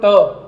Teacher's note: चाहे तो आप उच्चारित करके देख लो, टा बोलो तो धीरे से बोलो ट, तो जीभ पहले हल्की सी पीछे मुड़ेगी, जीभ का अग्रभाग, और फिर धड़ाम से क्या होगा, आगे की तरफ फेंका जाएगी। तो ऐसे व्यंजन जिनका उच्चारण जीभ के अग्रभाग के आधार पर पीछे जाकर लुढ़कते हुए आगे आकर होता है, उन्हें अपन क्या बोलते हैं, मूर्धा या मूर्धन्य व्यंजन बोलते हैं।